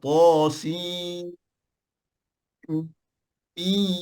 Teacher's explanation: Dan di antara nun dengan mim ada dengung.